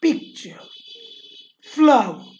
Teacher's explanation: आयम्बिकचा opposite trochaic. One stressed syllable followed by an unstressed syllable. एक अगोदर stressed syllable, नंतर unstressed syllable.